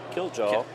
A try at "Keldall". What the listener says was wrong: Keldall. J is silent. Or at least that's the way he said it last time.